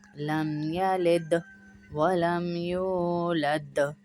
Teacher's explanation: دونوں دال پر قلقلہ ہوگا۔ قلقلہ مطلب آواز لوٹ کر واپس آئے گی۔